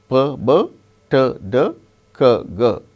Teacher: These 6 sounds are called plosives because air comes out all of a sudden.